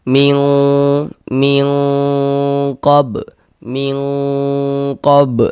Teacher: Nah, karena makharijul huruf nun dengan huruf qof ini dia jauh begitu. Nah, maka dia kalau ikhfa hakiki ab'adi itu lebih condong berbunyi eng.